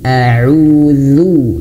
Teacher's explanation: ketika dhammah, mulutnya harus dimonyongkan atau dimoncongkan